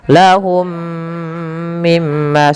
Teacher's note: Mim yang pertama masukkan mim kedua dan ditahan sepanjang 2 harokat. Kemudian mim yang kedua yang itu ditahan, yaitu adanya gunnah